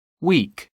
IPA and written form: wiːk (week)